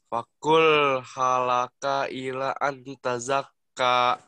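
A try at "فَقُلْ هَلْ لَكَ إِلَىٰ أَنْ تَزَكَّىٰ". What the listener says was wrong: Lamnya tekan ya. Lam kedua tekan. Fakul halaka. Halaka.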